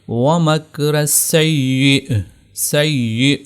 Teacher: ہم اس کو پڑھیں گے وَمَكْرَ السَّيِّئِ، سیئ، حمزہ ہم نے گویا کہ جھٹکا دے کر اس کو یہاں پر حمزہ کو ظاہر کرنا ہے۔ اس کو جب ساکن کریں گے تو اس یا کو نہیں پڑھیں گے، سیئی نہیں ہوگا۔